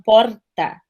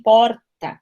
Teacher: o R paulista traz já um movimento mais dental, eles falam porta, né, o gaúcho também porta, é um R que vibra no dente.